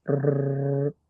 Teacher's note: And that is when nun sakin is followed by lam or ra. Then observe takrir of the ra, meaning make sure you roll your r.